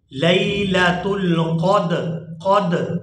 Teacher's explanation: یہاں دال جو ہے حروف قلقلہ میں سے ہے اور یہاں پر ہم قلقلہ کبیر کریں گے۔